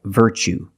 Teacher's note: you see Tue as the second syllable so the t is pronounced CH like chicken